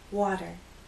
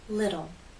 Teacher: We don't have the true T sound, T. Instead, we have what's called a flap T. We can use this symbol to represent the flap T.